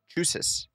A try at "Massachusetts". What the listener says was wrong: It's Chusits. There's two C. There's two T's at the end of the